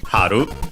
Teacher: Haru means spring as in the season and is accented on the first syllable.